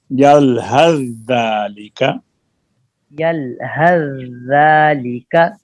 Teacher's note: اب سا کا زال میں ادغام ہوگا، سا نہیں پڑھا جائے گا، ہا زال کے ساتھ ملے گی